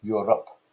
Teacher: England, part of a small island off the west coast of Europe. And if you focus in on the R sound there, you can see it's slightly rolled